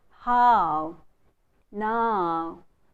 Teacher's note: It should not be equal. The first vowel sound should be more prominent than the second vowel sound.